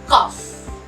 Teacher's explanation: There's no vibration in the consonant F.